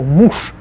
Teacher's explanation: Же at the end becomes sh, so муж.